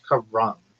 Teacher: Emphasis on the first syllable.